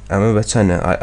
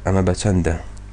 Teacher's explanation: As you might notice, I say ama bachana. I do not pronounce the d in chanda, and this is totally normal.